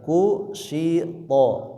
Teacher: Kusyito, to-nya ditebalkan. Ini huruf to tidak boleh nafasnya mengalir ya. Kusyito, to bukan to tapi to, out to.